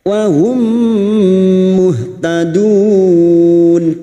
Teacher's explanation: mim sukun bertemu mim idgham mimi, masuk pada huruf mim berikutnya dan mendengung selama 3 harokat.